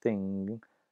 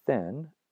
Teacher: velar nasal versus alveolar nasal, or sung versus sun, and those are two different words.